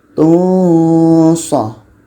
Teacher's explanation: Ketika sebut tanwin kita sudah merasakan huruf sha.